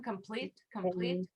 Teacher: stressed on the second syllable again